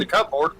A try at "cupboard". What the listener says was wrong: Like CUP board cupboard? It's cupboard. Indian in the cupboard, not cupboard. Oh, it's pronounced cupboard.